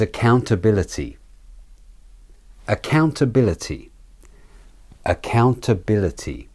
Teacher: the two a vowels are de-stressed and also the second I is also said as the weak form